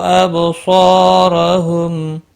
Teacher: اب با ساکن پر قلقلہ ہوگا، صاد حروف مستعلیہ ہے اور الف بھی اس کے ساتھ پر پڑا جائے گا